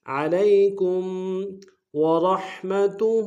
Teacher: کم میں ساکن یہاں پہ غنہ کریں گے